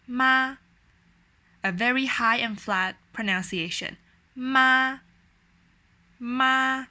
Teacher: four intonations um will will cross different levels of pitches so the first intonation starts off high and is a flat tone it remains in a high pitch